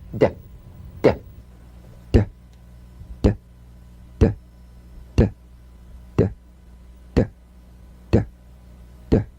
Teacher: Play this D drum beat on the springing away of the tongue from the upper gum ridge. Feel a pulsation in the tongue.